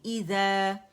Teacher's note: زا جو ہے یہ الف مدہ بن رہا ہے اور زال کی آواز کو 2 کاؤنٹ کے لیے اوپر کھینچا ہے